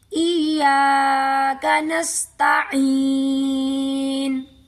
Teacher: اس کے ساتھ بھی یا ساکن ہے تو ہم عین کو گلے سے نکالیں گے، اور یا مدہ ہے اس لیے ہم عین کو لمبا کر کے پڑھیں گے